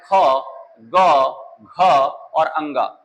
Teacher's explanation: आप देखिए सबसे पीछे जो जहां पर क को हमने बताया वहां पर पीछे सबसे पीछे की तरफ कंठ है तो इनका उच्चारण जो होता है यह क वर्ग का उच्चारण यह कंठ से है इसलिए क वर्ग को जो है कहा गया है कंठ और कंठ वर्ग या ये कंठ वर्ग के अंतर्गत आएंगे तो ये कंठ से उच्चारित होते हैं।